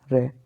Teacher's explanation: जब आप रे को बोलोगे तो रे बोलते वक्त जो आपकी जीभ होगी वो तालु से लुढ़क कर जाएगी, रे। देखिए बोली रे। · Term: लुंठित वर्ण